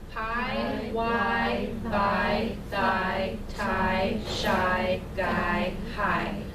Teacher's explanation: So as a sample place of articulation, if you say this list of words in order, you can feel your articulators move gradually from the most anterior position to the most posterior position